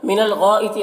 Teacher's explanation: गैन को पुर पढ़ेंगे, रुफ़ मुस्तालिया में से है और ये मध्य मुत्तसिल से 3-4 अलिफ के बराबर खींचेंगे।